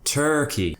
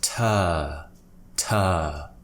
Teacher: in British English we often replace the R with a vowel